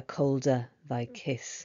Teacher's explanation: the harsh alliteration with the cold colder and kiss quite plosive sounds